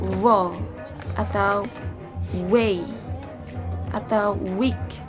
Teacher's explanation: Itu disimbolkan dengan huruf W seperti pada kata wall atau way atau week. Konsonan ini tergolong dalam bunyi velar, approximate, dan juga voice sound.